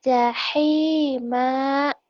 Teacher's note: Kalau dihentikan, jahima, hei-nya kurang lembut ya.